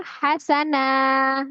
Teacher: Fathah tanwin berubah menjadi fathah dibaca 2 harokat. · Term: mad iwad